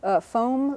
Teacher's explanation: this o is a little bit nasalized because of the following M foam let's see what other examples we have host a host · And actually, again, if you're being detailed and doing a very narrow transcription, you can put a little N in the air here, which indicates that this O is a little bit nasalized because of the following M